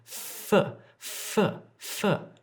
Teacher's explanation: say full pull pull pull full when I'm making this sound my top teeth are on my bottom lip and I'm pushing air through